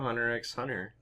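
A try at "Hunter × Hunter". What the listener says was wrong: You don't pronounce the X.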